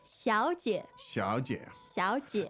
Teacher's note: And those tones are Third and neutral.